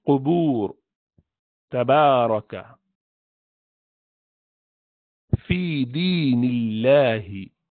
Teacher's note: You do not nasalize it. There's no use of nose or nostrils in pronunciation of alif sakina or waw sakina.